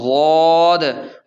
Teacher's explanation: زبان کی کروٹ سے غاد ادا ہوتا ہے